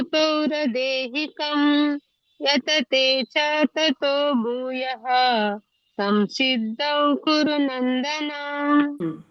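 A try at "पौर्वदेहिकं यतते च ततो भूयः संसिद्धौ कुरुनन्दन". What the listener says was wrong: correct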